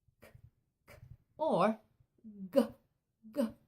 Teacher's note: when my mouth is wide open, k, k, or g, g, I make it right at the back of my mouth